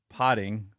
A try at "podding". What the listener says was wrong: well, it sounds like you're saying pot.